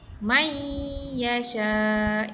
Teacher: Jadi bacaannya kita masukkan may yasha. Nun mati itu dihilangkan bunyinya kerana kita masukkan terus dengan huruf ya.